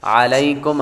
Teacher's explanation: علیکم عین کی آواز نکالیں گے اور لام کے بعد یا حروف لین میں سے ہے